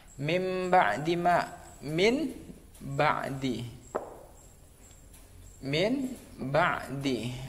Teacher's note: nun mati bertemu dengan huruf ba, maka dibaca nunnya dibaca mim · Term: iqlab